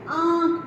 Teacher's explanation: हम जैसे आंख बोलेंगे तो हमारी नाक से सुर निकलता है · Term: अनुनासिक